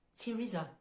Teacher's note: dire le prénom Teresa en français donc là encore une fois la prononciation du T uniquement on entend pas du tout le H